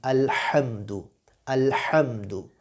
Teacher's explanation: جس طرح آپ رننگ کرتے ہیں تو آپ کو سانس چڑھ جاتا ہے، یہ جو آواز ہے یہ ہے اس ہا کی